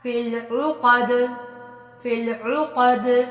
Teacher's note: یہاں بھی قاف موٹا بڑا، دال پہ کلکلا کیا